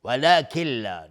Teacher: نون ساکن به لام ادغام بدون غنه